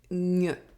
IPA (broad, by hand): ɲ